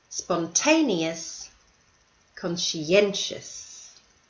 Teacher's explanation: So notice in the last two words, these are multi-syllable words, and the stress is on the second last syllable